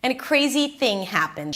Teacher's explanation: She ends it at the end with a rising, falling intonation. Reduced. And a crazy thing happened.